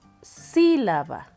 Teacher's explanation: La que suena más fuerte es sí. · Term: sílaba tónica